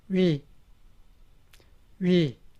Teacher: It is made by combining wu and e. So you should pronounce wu and e in a row very quickly.